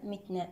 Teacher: التاء هنا ساكنة، نأتي بصفاتها الشدة، الهمس، الانفتاح، الاستفال، الإصماء.